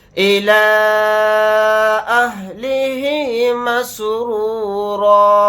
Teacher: اس را کو موٹا یعنی پر پڑھیں گے کیونکہ را کے اوپر پیش ہے · یہاں پر مد منفصل کا قاعدہ ہو رہا ہے کیونکہ لام کے اوپر کھڑا زبر ہے، کھڑا زبر بھی حروف مدہ کے قائم مقام ہوتا ہے اور حروف مدہ کے بعد حمزہ دوسرے کلمے میں آ رہا ہے الف کی شکل میں، تو اس لیے اس میں مد منفصل ہوگا، یعنی اس مد کو ہم 3 الف کی مقدار کھینچ کر پڑھیں گے